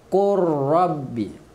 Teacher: Lam terus masuk ke dalam ra tanpa dengung.